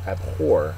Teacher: the accent syllable is the second syllable